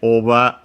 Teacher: oba on its own accented on the O as expected